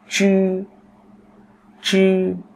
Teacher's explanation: Và nó là một âm không bật hơi.